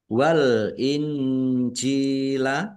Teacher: Wal injila alif lam komariah ditandai lamnya dibaca sukun.